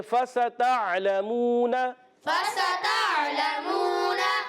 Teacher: تا کو عین سے ملانا, عین کو ہلانا نہیں ہے, عین کلیئر کریں گے. لام پر زبر ہے, میم واو پیش مو, واو مدہ, لام کی زبر کو نہیں کھینچنا مگر واو مدہ کو ایک الف کھینچیں گے, اور نون پر بھی زبر, اس کو بھی نہیں کھینچیں گے.